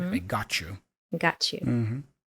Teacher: the word ends in t and the next word starts with Y very often we have this CH sound the new sound appears in the combination of Ty letters so